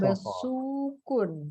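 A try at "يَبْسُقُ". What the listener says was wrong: Jangan ditanwin ya, karena fiil tidak boleh tanwin. Ya besuku.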